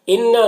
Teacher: نون مشدد ہے، غنہ ہوگا